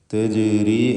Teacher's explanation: ജീമിൻ്റെ സുക്കൂൻ ഖൽഖല സൂറ നൽകുകയും വേണം. ശബ്ദം ഹറക്കത്ത് പോലെ ചലിപ്പിക്കുക സുക്കൂനിനെ.